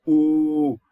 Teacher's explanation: As you could see, for example, when you say the ooh, the sound, the tongue is in back of the oral cavity, and the tongue is lifting up, and we call this sound high, and we call it back.